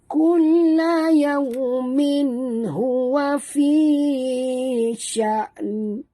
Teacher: Kerana di akhirnya ada nun. Jangan baca fi sya. Tak betul ya. Kena bunyikan nun itu.